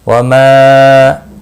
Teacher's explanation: وَمَا مد منفصل ہے، تین الف کے برابر کھینچ کر پڑھیں گے